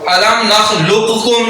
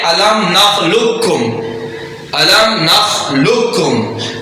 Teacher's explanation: اب ان میں سے پہلا ساکن ہے دوسرا متحرک ہے، یہ قاف اور یہ کاف قریب المخارج ہیں، تو پہلے کو دوسرے میں مدغم کر دیں گے، ملا دیں گے۔ اب اس کو الم نخلقکم نہیں پڑھیں گے بلکہ ڈائریکٹ اس کاف سے الم نخلقکم، الم نخلقکم، تو یہ تھا ادغام متقاربین۔